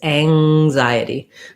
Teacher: that ng sound is lifting in the back